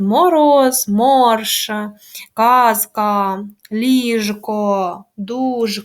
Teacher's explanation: дзвінкі приголосні звуки в нас в кінці складу оглушувати не можна Їх вимовляють чітко